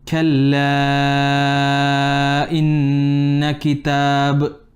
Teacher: Now your kaf, make a bit of hams.